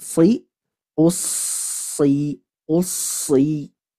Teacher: ketika huruf sod kasrah maka tingkat tebalnya nakis, berkurang dibanding ketika so dan su. Nah, jadi si tetap tebal, isti'ala dan itbaqnya tetap ada, akan tetapi yang menjadi pembeda dia tingkat atau kadar ketebalannya berkurang sedikit.